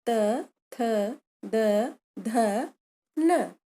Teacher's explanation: मुख में तालु के पश्चात दांत आता है। दंत या दांत से जिह्वा के टकराने पर वायु मार्ग में अवरोध उत्पन्न होता है और इससे ये ध्वनियाँ उत्पन्न होती हैं त, थ, द, ध, न। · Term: दंत ध्वनियाँ